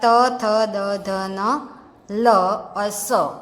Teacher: ये सब शब्दों का उच्चारण कहाँ से होता है? जब जीभ दांत को टच करती है तब. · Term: दंत्य